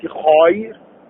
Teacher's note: يرقق حرف الراء بعد مد اللين